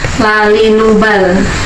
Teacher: lam di sini ujung tepi lidah bertemu dengan gigi gusi depan ya. Jadi gusinya depan ya, gusi depan ya, bisa dirasakan sendiri saat kita mengucapkan huruf L, lalinubal.